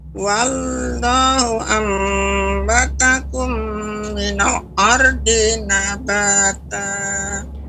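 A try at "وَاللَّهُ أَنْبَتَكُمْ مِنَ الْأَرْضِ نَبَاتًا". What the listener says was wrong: Minal. Nah, ini enggak terlalu terburu-buru Nek mengucapkan minalnya. Wallahu ambatakum minal ardi nabata.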